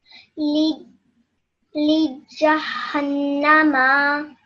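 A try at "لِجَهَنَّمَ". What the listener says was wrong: Good, well done. Just your meme, you made it a bit longer.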